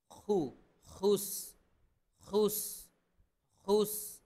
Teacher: খু হলকের কণ্ঠনালীর শেষ থেকে